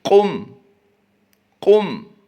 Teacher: क़ाफ़ की अदायगी पुर करेंगे